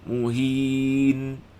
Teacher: Dengung dia dengung naqisah kat situ.